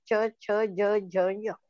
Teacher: बघा, तुम्ही फरक लक्षात घ्या, तुम्ही उच्चार करून बघा. च छ ज झ य, जीभ फक्त टाळूला स्पर्श करते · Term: तालव्य वर्ण